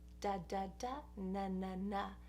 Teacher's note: If you say da, da, da, na, na, na, you're touching the same place, the tooth ridge.